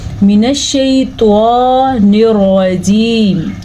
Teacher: پر کا مطلب موٹے۔ اور رجیم میں ہم نے را کو پر پڑھا، اس لیے کہ را کے اوپر زبر ہے